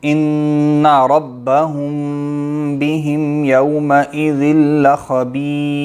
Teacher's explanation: ربهم کی را موٹی زبر ہے نا